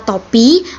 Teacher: pada kata topi bunyi teh ini merupakan bunyi apikodental